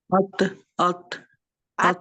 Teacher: जबान की नोक ऊपर वाले दांतो के ऊपर लग रही है